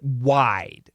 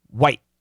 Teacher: when we say the word wide we usually say it wide we open wide and when we say white it's usually quicker